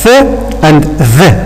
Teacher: These two sounds are produced by putting our tip of the tongue between our teeth, both the lower and the upper teeth here. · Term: interdental consonants